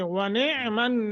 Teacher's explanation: یہ نون مشدت ہے، غنہ کریں گے